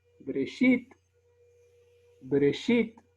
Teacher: La sheva sonora es una sheva que suena como una E apresurada